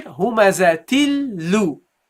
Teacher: We drop the tanween. We drop the noon. Again, we drop here the noon, which is non-voweled, and we double the lam. The first lam, non-voweled, and the second lam has here, in this case, a kasra.